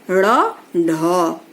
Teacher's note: जिह्वा होती है वो तालु के किसी भाग को झटके से छूकर के हट जाती है, उनको जो है उत्क्षिप्त व्यंजन कहते हैं, जैसे ड़, ढ।